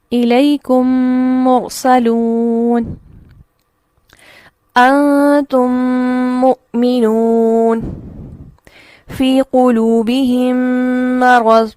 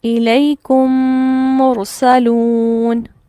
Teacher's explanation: پہلی میم کو دوسری میم میں داخل کر کے ایک الف کے برابر غنہ کرنا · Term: ادغام